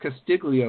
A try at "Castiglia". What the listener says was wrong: us Castillias call it Castiglia, so the G is silent.